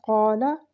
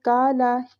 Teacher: یعنی کہ قاف کی جگہ کاف کر دیا اور لام کی زبر کی جگہ ہم نے لام کے ساتھ کھڑی حرکت لگا دی